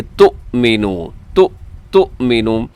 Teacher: کے اوپر حمزہ ہے تو آپ اس کو جھٹکے کے ساتھ پڑھیں گے